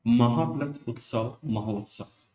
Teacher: बड़ा आ प्लस उ मिलके क्या हो जाते हैं, बड़ा ओ में ओ हो जाते हैं, बड़ा ओ नहीं होता, ओ ही होता है, ठीक है।